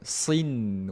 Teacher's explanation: dia tak perlu dengung sampai dua harakat tuan puan. Dengung asli sahaja.